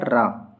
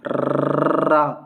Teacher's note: जब हम रा का उच्चारण करते हैं तो हमारी जीभ कांपती है। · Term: प्रकंपित व्यंजन